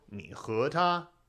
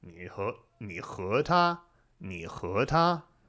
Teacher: when you go 你 和 他, you're going low, up, high. Low, up, high.